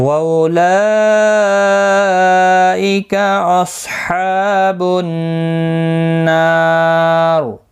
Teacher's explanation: ملانے کی صورت میں را زیر کی وجہ سے باریک پڑھا جائے گا